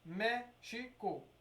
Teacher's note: Três sílabas, a antepenúltima é a sílaba tônica, então é classificada como uma proparoxítona.